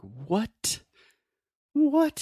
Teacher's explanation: if I really articulate that t sound it is like I am demonstrating something like disbelief or I'm so surprised